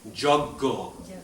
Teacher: Y becomes ja, A becomes slight O sound, and the JN becomes a G, again, like gan, so it becomes a G.